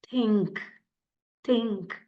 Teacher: is an unvoiced sound think think there is no vibration